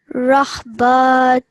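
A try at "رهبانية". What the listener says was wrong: And that's noon. Nijah. So rahbanijah.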